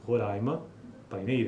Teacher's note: em Boa Vista, os ditongos decrescentes seguidos de consoantes nasais manifestam-se foneticamente como uma sequência de vogal glide, orais